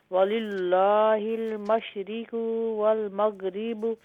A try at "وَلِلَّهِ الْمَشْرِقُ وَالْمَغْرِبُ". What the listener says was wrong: نہیں، قاف کو لمبا نہ کریں. وَلِلَّهِ الْمَشْرِقُ وَالْمَغْرِبُ.